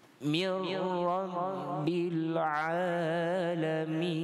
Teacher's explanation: Ra tu baru kita baca dengan tebal. Pada kita masukkan idgham, ini tak ada dengung, iaitu nun mati bertemu ra.